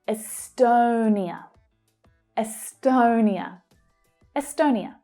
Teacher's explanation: The /əʊ/ vowel sound as in 'go'.